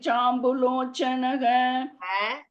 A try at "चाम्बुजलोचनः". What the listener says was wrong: ஜ ஒண்ணு போடுங்க.